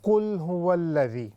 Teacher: مثال کے طور پر قل هو الذی، اب دیکھنے میں یہ عام یعنی اس پر کوئی بڑا رول لاگو نہیں ہو رہا، لیکن اگر ہم اس کو پڑھتے پڑھتے ایسے پڑھ لیں علی صراط مستقیم قل هو الذی، اب قل یہ لام پر باؤنس ہے ہی نہیں